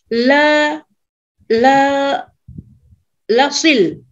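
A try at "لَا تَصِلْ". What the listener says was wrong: Lata. Nah, ini ada lata, Ibu. La tasil.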